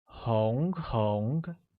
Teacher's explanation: Red translates as 红, which is pronounced with a mid-rising tone on O.